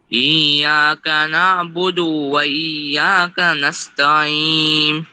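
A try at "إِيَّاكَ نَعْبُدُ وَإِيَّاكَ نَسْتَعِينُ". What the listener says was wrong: তাহলে দেখো, ইয়াকা না'বুদু ওখানে কি দালে কোনো টান আছে? হ্যাঁ, তাহলে আমরা টান দিব না। ইয়াকা না'বুদু ওয়া ইয়াকা নাস্তাঈন।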